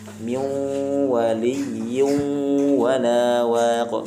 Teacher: Harus masuk disertai dengan suara dari hidung. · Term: dengung